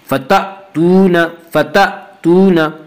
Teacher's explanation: حمزہ کے اوپر جب جزم آئے تو حمزہ جھٹکے کے ساتھ پڑھا جاتا ہے